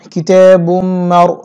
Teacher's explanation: রা পুর করে উচ্চারণ করতে হবে। মার বলা যাবে না, মার বলতে হবে।